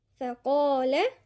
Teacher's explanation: القاف هنا مفخمة واللام بعدها مرققة